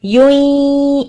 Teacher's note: اب یاد ہو پیش یون کے اندر جو ایک پیش ہے اس کو اچھا سا ہونٹوں کو گول کر کے ادا کرنا ہے, پھر یا کے مخرج پہ ادغام کرنا ہے یوں اس طرح کر کے.